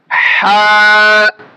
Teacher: এখন আমাদের হা হরফটি উচ্চারণ হবে হলকের মাঝখান থেকে, অর্থাৎ এখান থেকে।